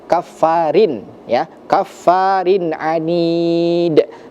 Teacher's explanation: Kafarin kasrotain bertemu dengan huruf ain. Maka di sini hukum bacaannya adalah izhar halqi, ya. Artinya dia harus jelas pengucapan huruf nunnya